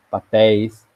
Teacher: ditongo de pronúncia aberta em posição de oxítona